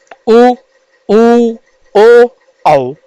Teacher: जब हम इनका उच्चारण करेंगे तो हमारे होठों की आकृति गोल हो जाएगी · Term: वृत्ताकार वर्ण, वृत्ताकार